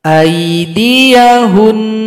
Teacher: nun yang tasydid disukunkan lalu dengung 2 detik atau 2 ketukan.